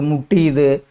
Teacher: ஆயுத எழுத்து அரை மாத்திரை அளவிலிருந்து குறைந்து 1/4 மாத்திரையாக ஒலிப்பது ஆயுத குறுக்கம்.